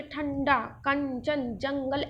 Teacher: अंग को अनुस्वार कहते हैं जैसे आप बोले ठंडा कंचन जंगल ऐसे लगता नाक से बोल रहे हो